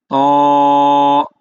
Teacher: দেখেন ত উচ্চারণ করেন ত জিবার আগাটা কোথায় লাগে দেখেন তো সামনের উপরে দুই দাঁতের গোড়ায় লাগে কিনা দেখেন তো যদি না লাগে তাহলে আপনার হরফটা শুদ্ধ না